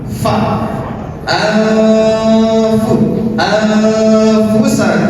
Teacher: [Musik] ju ja min ju berbeda dengan nun sakinah bertemu dengan fa maka siap-siap untuk melafalkan huruf fa tersebut an fu fa kan asal kata huruf fa itu Fa fa salah satu sifatnya adalah hams dan harus keluar desis